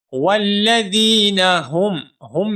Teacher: اب یہاں پر اس آیت مبارکہ میں آپ دیکھیں والذین ہم میں جو ہا ہے دو آنکھوں والا اس ہا کو ہم موٹا کر کے پڑھیں گے